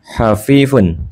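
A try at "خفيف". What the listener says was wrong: Kha, bukan ha. Santai, benar.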